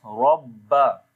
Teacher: ba we read with the strong voice. Rabba, because there is shad sign. Ha we long due to standing fatha.